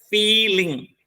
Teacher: So main word is feel, so the first syllable is stressed, feeling. The fee is stressed and ling is unstressed.